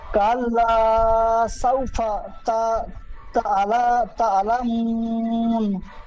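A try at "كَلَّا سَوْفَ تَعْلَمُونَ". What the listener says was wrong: সুন্দর পড়েছেন।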